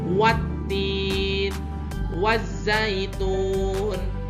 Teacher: Ada alif lam menghadapi huruf ta, tetapi alif lamnya tidak usah dibaca. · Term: alif lam samsiyah